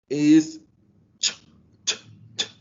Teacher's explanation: Um, Place of articulation, tongue and roof of mouth. Voicing is voiceless because your vocal cords don't vibrate. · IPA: /tʃ/